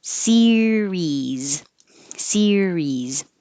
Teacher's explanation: keep your tongue very high, very tense, because it's the same vowel in both parts.